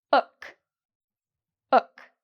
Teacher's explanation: the vowel, here, it sounds like the vowel sound in book, ook. Okay? So, it's a shorter vowel.